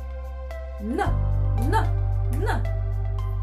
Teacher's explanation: То есть получается, звук н у нас согласный, звонкий и твердый.